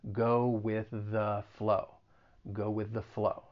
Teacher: in mind there there are some overlapping sounds those th's so that final th in with is going to overlap with the beginning th and the the only difference is that in with that th